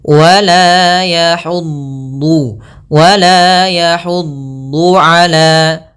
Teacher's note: Sisi lidah kita menempel dengan gigi geraham atas sehingga dia menebal. Kemudian pangkal lidah juga ikut terangkat dan lidah itu juga melekat dengan langit-langit. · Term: dhad